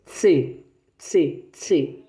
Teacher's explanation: Como se fosse um S. Ele tem uma travadinha. Você coloca a ponta da língua nos dentes superiores, né? Nos dentes de cima da sua boca.